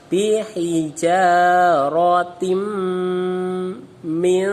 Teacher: Sama membacanya adalah dibaca dengung. Masuk langsung ke huruf mim, tahan di mim, dibaca dengan sambil berdengung. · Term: idgham bi gunnah